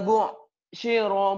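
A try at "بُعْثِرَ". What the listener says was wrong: Sa, si, sa, sa, jangan sin. Sa, sa, bu'shiro.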